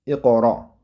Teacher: Hop, qof sukunlik bo'ldi. Qof qalqala qilinadi.